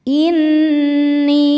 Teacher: Karena nun bertasydid, cara bacanya berdengung. Tahan dengungannya kurang lebih dua harakat. Inni ni mad thobi zohiri karena ada ya sukun sebelumnya baris kasrah. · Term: dunah musyaddadah